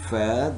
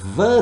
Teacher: teeth lower lip upper teeth both are labial dental sounds remember both are labiodental upper teeth and lower lip